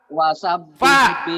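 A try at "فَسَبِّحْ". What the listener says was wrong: bukan wa, fanta. Bapak mungkin bilang fa, tapi karena kurang ngebuka mulut, kedengaran sama saya jadi wa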